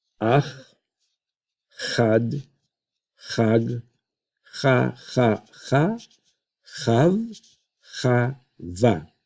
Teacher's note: this has to be a guttural sound. Not a hard French R, it's actually the letter chet.